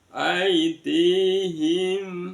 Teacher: mim sukun bertemu dengan sinin bacaan izhar syafawi jelas di bibir aid Sempurnakan sampai bunyi aidihim.